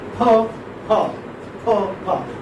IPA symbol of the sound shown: p